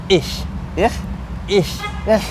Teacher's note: The CH is being pronounced. It's like a hiss kind of.